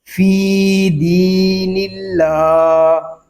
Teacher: یہاں اللہ پاک کا لام باریک ہوگا کیونکہ اللہ پاک کے لام سے پہلے حرف کے نیچے زیر آ گیا ہے